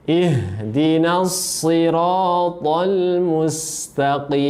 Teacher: Tetap ditebalkan karena huruf so ini walaupun berharokat kasro, ya, harus dibaca tebal, ya. Jadi tebal dalam semua keadaan itu huruf so, baik itu ketika fathah, baik itu ketika loma, dan terlebih ketika kasro.